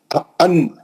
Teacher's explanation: آپ کی زبان اٹھی اوپر اور اس کی نوک جا کے اوپر کے مسوڑوں کو لگی، دانتوں کے پیچھے جو ہارڈ حصہ ہے، مسوڑے جس کو بولتے، وہ ہارڈ اسپیس پہ جا کے لگی تو نون ادا ہوا۔ · نون کا مخرج جو ہے زبان کی نوک ہے اور اوپر کا مسوڑا ہے